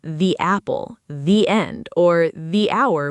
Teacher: right before a vowel sound, the switches over to the instead, a longer, clearer sound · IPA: /ðiː/